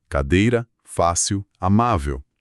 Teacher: As paroxítonas, que têm a força na penúltima sílaba.